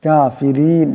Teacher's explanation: কাফিরিন এখানে রার নিচে জের আছে, আওয়াজটাকে পাতলা আওয়াজে পড়তে হবে